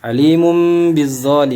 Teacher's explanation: apa domain bertemu dengan huruf ba hukumnya iqlab I do matanya dirubah menjadi huruf mim dan didengungkan atau ditahan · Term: iklab